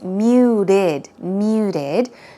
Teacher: The T is not very strong. It sounds more of a r sound.